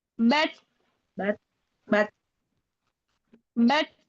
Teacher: Tak sukunnya kasih dia hamas. Ada nafas yang keluar.